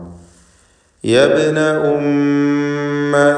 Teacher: ബാഇൻ്റെ സുക്കൂൻ ഖൽഖല സുഗ്റ നൽകി ശബ്ദം ഹറക്കത്ത് പോലെ ചലിപ്പിക്കണം. അന്ത്യത്തിൽ വന്ന ഷദ്ദുള്ള മീം മുഷദ്ദദത്തായ മീമിനെ മണിച്ചുകൊണ്ട് ഉച്ചരിക്കണം.